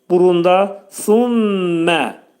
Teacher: Sümmə mim hərfinin demək idğam mə'al gunnə olacaq. Mim hərfi sıxılacaq.